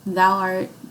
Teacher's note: thou is stressed right art is unstressed